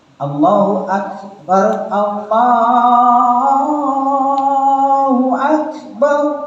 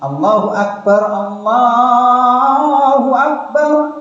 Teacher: Yang pertama ada suara desis, yang kedua tidak.